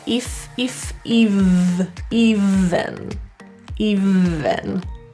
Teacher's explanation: smile even the main issue here is always that V sound often students will pronounce it with an F or voiceless sound so we add a bit of voicing to it